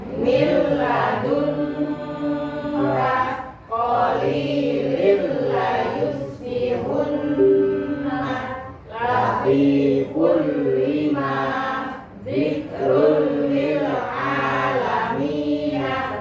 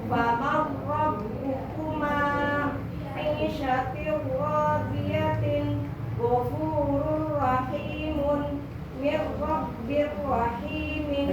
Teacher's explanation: Jadi bila guna tidak dengan dengung. Jadi suara lam dan ro-nya tidak boleh dengung. Itu namanya idgham bila guna dan tidak boleh lama.